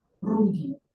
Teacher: The Mennonite R is rolled more quietly. The tip of the tongue very carefully taps the front teeth, the top front teeth.